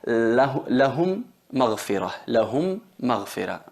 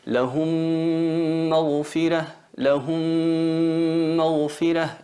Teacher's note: se convierten en una M reduplicada con shadda, y ahí tenemos que hacer la nasalización, que es la gunna, en la duración de 2 tiempos, 2 harakat, como vamos a estudiar inshallah con más claridad en el bloque de al-mad. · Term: la fusión labial